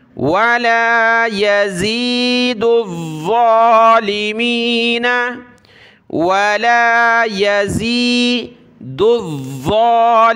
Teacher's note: دال کو ضا کے ساتھ ملایا